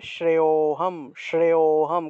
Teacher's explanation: লুপ্ত অ থাকায় আগের অংশটা একটু টান দিয়ে উচ্চারণ করতে হবে